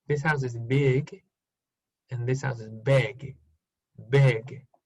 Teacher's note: Entonces, muy sutil el cambio de i a e.